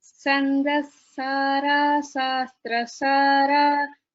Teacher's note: because of the regional language influence, we pronounce sha as sa and vice versa